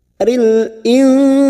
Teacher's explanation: nun sukun bertemu sin ikhfa hakiki, sama kita samarkan 3 harokat,